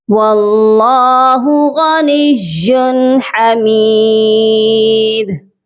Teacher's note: لام کو ہم موٹا بھی کریں گے اور ایک الف کے برابر لمبا بھی کیا جائے گا۔ غنیٌ، غائن بھی موٹا پڑھا جائے گا، اور نیٌ، نون کو یا مشدد کے ساتھ سختی سے ملائیں گے، اور یا کے اوپر تنوین ہے، یہاں پر بھی صرف اظہار حلقی ہوگا کیونکہ آگے ہا ہے جو کہ حروف حلقی ہے۔